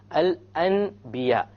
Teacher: So we don't pronounce it Al-An, we change the Noon into a Meme, and then we do a Ghunnah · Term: iqlab